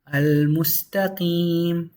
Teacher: The lam is pronounced 100% because the meme doesn't have a Shaddah. So this is a moon letter.